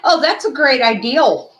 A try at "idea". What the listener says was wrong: Yeah, there's no L in idea. Well, that's just like JJ saying Miriam instead of Myron.